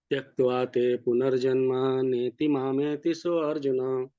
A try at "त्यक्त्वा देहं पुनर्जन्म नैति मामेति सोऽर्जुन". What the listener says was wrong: हाँ, यहाँ देखिए तीसरी पंक्ति में आप थोड़ा सा देहम शब्द को का उच्चारण मुझे लगा नहीं कि आपने उचित किया